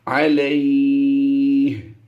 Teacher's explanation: لام یا زبر لمبا نہیں کرنا تھا، لیکن ہم نے یہاں پر جب وقف کیا تھا تو وقف کی حالت میں سکون عارضی ہو گیا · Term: مد لین عارض